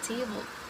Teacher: In the word table, the stress is in the first syllable, ta, while the syllable bowl is unstressed. All the unstressed sounds are shorter, and all the stressed sounds are longer and also louder.